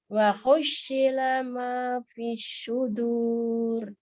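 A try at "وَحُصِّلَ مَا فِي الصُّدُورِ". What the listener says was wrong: Shotnya kayaknya kurang pas itu. Husila.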